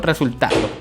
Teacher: Yo no puedo decir resultado, ni tampoco resultado, sino yo digo resultado. Entonces lleva la mayor fuerza de voz en la sílaba ta, porque se ubica la mayor fuerza de voz en la penúltima